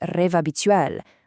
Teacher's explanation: It becomes rêve habituel, linking that V straight to the A. You're literally restructuring the syllables as you speak. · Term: enchaînement